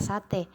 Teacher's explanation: Tengah atas depan tak bundar